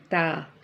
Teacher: حرف نتیجہ میں سے ہے اور جب زبان کا سرا اوپر کے سامنے والے دو دانتوں کے کناروں سے لگے تو یہ حرف ادا ہوتا ہے. pronounced from the tip of the tongue touching the roots of the top two front teeth.